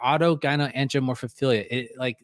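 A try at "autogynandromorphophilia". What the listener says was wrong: He's adding syllables every time. Because he keeps adding syllables every time.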